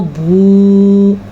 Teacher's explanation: کذبوا یہ آپ نے کھینچ کے پڑھنا ہے کیونکہ یہاں پہ واو مدہ ہے، با پیش واو بو، اتنا لمبا اس کو پڑھا جاتا ہے.